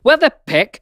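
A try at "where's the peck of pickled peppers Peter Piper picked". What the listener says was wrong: Ah! You said where? It's where's.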